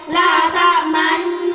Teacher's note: bacaan ismam ialah mencucu di tengah-tengah dengung sebagai isyarat bunyi dhammah